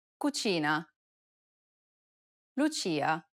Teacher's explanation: notice how the CH sound is more stressed in Italian than it is in English